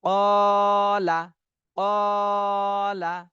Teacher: এখানে কফে টান দিতে হবে, লামে কোনো টান দেওয়া যাবে না